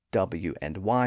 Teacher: that exist somewhere in the gray area between vowels and consonants those sounds are made with a very slight constriction of the vocal tract so they don't have the typical friction that we associate with consonants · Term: approximates